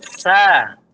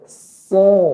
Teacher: Dia mirip dengan sa, tapi ditambah dengan menaikkan punggung lidah. Dan kedua bibir ke depan. Sa. Coba, Pak.